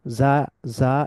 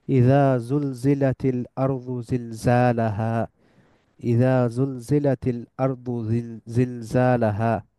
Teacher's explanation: খুব শক্ত একটা জেড এর উচ্চারণ। ইংলিশ জেড এর উচ্চারণ খুব শক্তভাবে যদি করেন তখন এটা হয়ে যায় যা। যেমন আমরা বলি জু, চিড়িয়াখানার ইংলিশ হচ্ছে জু।